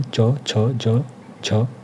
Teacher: च वर्ग में च, छ, ज, झ और य उच्चारण स्थान इसका तालव्य होगा।